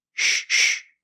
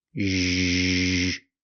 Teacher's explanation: We need this sound, zh. It's like the SH sound, sh, sh, but we make a voice. Sh. Now add the voice, zh.